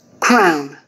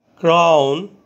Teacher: দুটি vowel sound একত্রে উচ্চারিত হয়। প্রথম স্বরধ্বনিটি একটু জোরে এবং দ্বিতীয় স্বরধ্বনিটি একটু নিম্নস্বরে উচ্চারিত হয়। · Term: ডিপথং